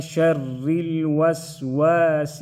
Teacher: شر را کو باریک پڑھ لیں گے کیونکہ را کے نیچے زیر آیا ہے